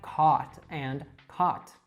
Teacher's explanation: So with the merger cot and caught become perfect homophones. · Now, this is referred to sometimes as the caught-caught merger. This is a phonetic phenomenon where the vowel of the word lot, for example, merged completely with that of thought. So with the merger, caught and caught become perfect homophones. · So most Californians don't distinguish between the ah and ah sound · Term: cot-caught merger